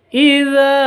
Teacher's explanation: Idza ini za panjang, dua harokat atau dua ketuk.